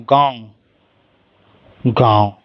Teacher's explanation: जैसे अगर कोई शब्द बोलूं मैं, जैसे कि गांव बोलूं, गांव, गांव, तो गांव, तो मुंह से ज़्यादा निकल रही है और नाक से कम